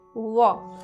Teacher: इन ध्वनियों का उच्चारण ऊपर के दांतों और नीचे के होठ की सहायता से किया जाता है। इनका उच्चारण ऊपर के दांत जो है और नीचे के होठ। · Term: दंतोष्ठ ध्वनियाँ